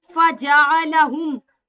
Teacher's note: अगर हम तजवीद की बात करें तो फजाअलहुम, इसको पढ़ना कैसे आयत को, फजाअलहुम, मीम साकिन के बाद जीम है, इजहार शफवी होगा।